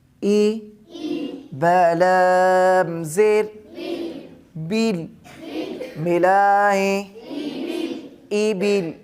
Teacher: تو زیر کو بھی وقف کی حالت میں ساکن کریں گے